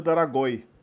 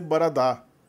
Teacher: a inserção de uma vogal para quebrar encontros consonantais iniciais na palavra